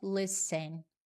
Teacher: Observa também, eu não pronuncio o T, é listen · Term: silent letters